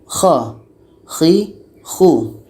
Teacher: Jadi K ini letaknya pada ujung tenggorokan · Rasakan pangkal lidah kita ini akan terangkat ke langit-langit.